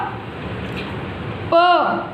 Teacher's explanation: बच्चों होठ से बोला जाता है ना, दोनों होठ भिड़ते हैं प बोलने में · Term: ओष्ठो